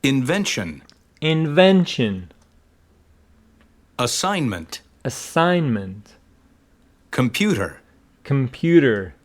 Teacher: again the second syllable is carrying the main stress